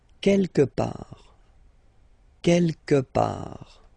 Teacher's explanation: Don't pronounce the final T.